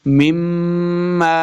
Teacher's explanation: میم مشدد ہے، یہاں پہ ہم نے غنہ کرنا ہے، پہلی میم کو دوسری میم مشدد کے ساتھ ملا کے پڑھنا ہے غنہ کے ساتھ